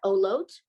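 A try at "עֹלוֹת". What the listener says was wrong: Olot was good, yeah, yeah.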